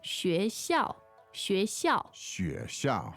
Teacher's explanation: Second and fourth tone.